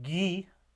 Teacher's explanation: you get that vibration in the vocal folds, but you also get kind of a puff of air with it as well. So that's a murmur.